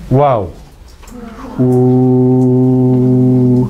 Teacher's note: También usted podrá sentir la salida de aire por los labios, ¿no? Entonces, hay fricción en dos partes, en la zona velar y en la zona labial. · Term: consonante fricativa bilabiovelar